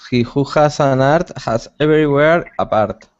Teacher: if you could tone down your rolling R's just a little bit